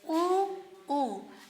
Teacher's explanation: ऊ में जो है ये पश्च स्वर है, जिह्वा का पिछला भाग है, पिछला भाग प्रयोग में आ रहा है। तो यहाँ पर आपका हो जाएगा ऊ और ऊ, यानी कि लघु ऊ और दीर्घ ऊ आ जाएगा यहाँ पर।